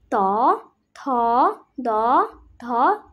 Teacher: জিভে আর দাঁতে মিলে দন্তন্য